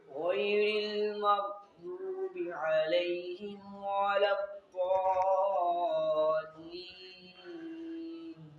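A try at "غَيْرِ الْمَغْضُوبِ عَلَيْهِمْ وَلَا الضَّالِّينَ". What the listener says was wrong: دیکھیں نا وہی غلطی آ رہی ہے، غیرل یعنی را کو پر کر رہا ہے، جبکہ آپ نے را مکسور کو بری کرنا ہے۔ غیرل کیسے؟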